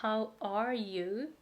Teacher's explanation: it's so fast at the beginning, and then it slows down at the end, because you have this speed and momentum, and at the end you don't stop right away.